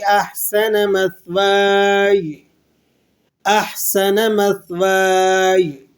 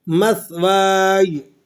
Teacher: یہ جو سین کی سیٹی ہے نا، یہ نہیں نکالنی آپ نے، اور یا کی آواز کو آپ نے ظاہر کرنا ہے